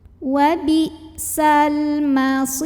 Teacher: Maka lam sukun dibaca idhar atau jelas. Atau idhar qomari.